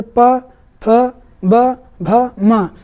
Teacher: ओष्ठक व्यंजन, ताकि इनको बोलने में सिर्फ होठ ही हिलते हैं